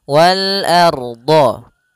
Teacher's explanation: a tipis ronya tebal